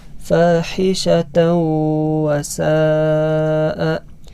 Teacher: ini hukum bacaannya idgham bi gunnah, yaitu dibaca dengung. Idgham bi gunnah, dibaca dengan gunnah.